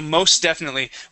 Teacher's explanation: We would swallow that T, so there's no need to pronounce the T there. Most uh-huh.